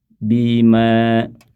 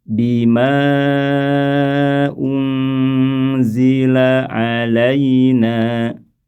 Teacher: Bima 2 harokat ketika berhenti. Ketika sambung kembali ke 4.